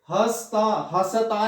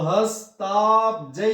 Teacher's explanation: देखिए हसता नहीं बोलेंगे, देखिए स यहां आधा है, स आधा है, व्यंजन है, अकेला है, हमने अ नहीं बोलना, तो हस्ताब्जै।